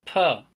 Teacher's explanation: A line in red is added to represent a stronger airflow on top of the square. With the maximum airflow, a candle blowing sound, puh, is produced · with the maximum airflow a candle blowing sound per is produced and the candle is blown out